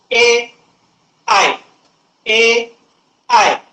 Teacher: पूर्णतः उच्चार जो आहे कंठातून निघतो पण आपली जीभ जी आहे टाळूला स्पर्श करते त्यामुळे याला कंठ तालव्य असं या वर्णाचं नाव देण्यात आलेलं आहे.